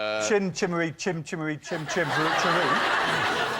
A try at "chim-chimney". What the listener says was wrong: Good point, although you called it chim-chimmery, which I think is wrong. Chim-chimney.